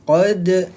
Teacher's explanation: hukum huruf yang sukun dibaca memantul, yaitu dia qalqalah sughra